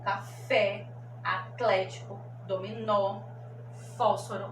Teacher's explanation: Quando os sons são abertos, como café, atlético, dominó, fósforo, olha o som aberto, O.